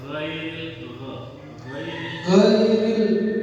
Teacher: huruf gho itu makhrajnya ada di mana teman-teman di tenggorokan bagian atas · Kalau yang ghain itu mungkin apa, kayak kita kumur-kumur di tenggorokan.